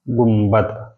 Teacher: جن الفاظ میں نون ساکن کے بعد با آتا ہے اسے ہم لوگ اس نون ساکن کو میم سے بدل لیتے ہیں